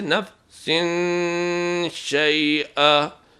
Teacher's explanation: بعض لوگ کوشش کرتے ہیں کہ خود آواز کو خراب کر دیتے ہیں کہ وہاں پر نون کی آواز نہیں نکالتے، ایسی بات نہیں ہے، آواز نون کی ہی نکالنی ہے لیکن ناک سے ادا کرنا ہے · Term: غنہ